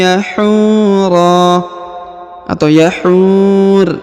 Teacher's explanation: di depannya terdapat wau sukun sebelum huruf pemberhentian dan huruf pemberhentian huruf ro disukunkan atau dimatikan karena berada di ujung ayat